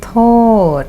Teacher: TÔD is pronounced with falling tone.